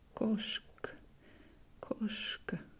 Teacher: So we barely hear A at the end.